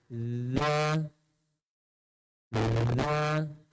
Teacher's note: Ujung lidah sentuh bawah gigi kacip atas, sentuh bawah gigi kacip atas, sedikit keluar. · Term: zal